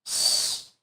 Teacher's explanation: A letra S é só um sopro, um sibilo, sem voz.